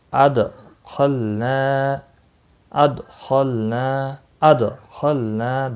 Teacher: دال ساکن پر قلقلہ ہوگا، لام ساکن پر قلقلہ نہیں ہوگا۔